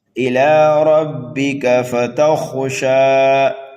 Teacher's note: کو پر پڑھنا ہے، یہ خا حروف مستعلیہ میں سے ہے، شین کو ایک الف کے برابر کھینچ کر کے پڑھنا ہے ، یہاں پر جو وقف ہوگا وقف بالسکون ہوگا۔ إِلَىٰ رَبِّكَ